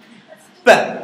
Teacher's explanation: So when you produce the air goes out, but you block it and then you release it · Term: plosives